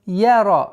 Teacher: Я мягкий звук, ра твердое и ударение в размере 2 огласовок.